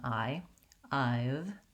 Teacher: Another error I hear on the word I've and other words that end with the voiced V sound is that people will devoice that sound and it might sound more like I've. You want to keep your voice on, lengthen the vowel before the V, and that will help you get that voicing.